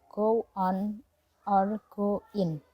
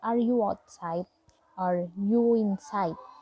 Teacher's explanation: There are the W between go and on or in. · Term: linking with W